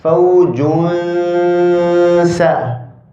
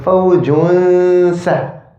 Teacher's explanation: we're not taking the noon and putting it into the sin, but we're just hiding it slightly. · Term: ikhfa